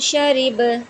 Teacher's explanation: ساخیرہ وقفن ساخیر، شین زبر شا، را زیر ری، شاری، با زبر با، شاریبا، وقفن شریب، یہ بھی با بھی حروف قلقلہ میں سے ہے، تو اس وجہ سے ہم یہاں پہ قلقلہ کریں گے، ٹھیک ہے۔ شین کو ہم نے زبان کے درمیان اور تالو کے درمیان سے ادا کرنا ہے، را کو ہم نے باریک پڑھنا ہے، را کے نیچے زیر ہے تو اس کو ہم باریک پڑھیں گے، ٹھیک ہے۔